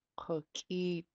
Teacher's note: You go from a underline KU, so back of the throat, KU, and then a pinched K, top of the mouth, high tone double E, and then a sharp T, a pinched T